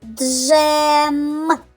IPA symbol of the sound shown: дж